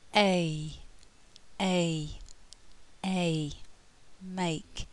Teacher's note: lips are relatively spread throughout the whole of the sound and the tongue moves from the front of the mouth just slightly further back · the mouth begins half open and moves to half closed um the lips are relatively spread throughout the whole of the sound and the tongue moves from the front of the mouth just